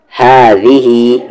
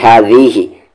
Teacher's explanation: ذال اسے نہیں کھینچیں گے کیونکہ اس پر صرف حرکت ہے